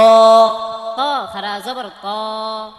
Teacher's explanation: জিব্বার আগা দাঁতের গোড়া, সামনের উপরে দুই দাঁতের গোড়া, এই যে তাও সেম মাখরাজ, কিন্তু তা পাতলা হবে, ত মোটা হবে।